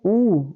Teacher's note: वृत मुखी जिसमें मुंह गोलाकार होता है